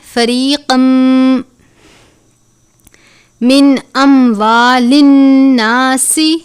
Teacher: نون ساکن کے بعد حمزہ ہے، حروف حلقی میں سے غنہ نہیں کرتے